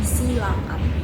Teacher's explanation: Terdapat penghilangan bunyi H. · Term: kontraksi